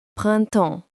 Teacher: notice the silent P and S at the end